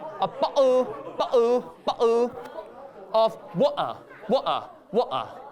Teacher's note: it's not a T sound, but it's this sound which looks like a hanger. It's what we call a glottal stop.